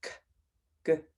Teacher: You'll notice if you say those sounds, k, g, that your tongue is lifting in the back of your throat. The back of my tongue is lifting and it's stopping the airflow. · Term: the k and the g sound